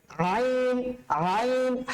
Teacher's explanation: কোত্থেকে উচ্চারিত হবে? কণ্ঠনালীর মধ্যভাগ থেকে উচ্চারিত হবে